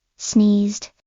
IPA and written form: sniːzd (Sneezed)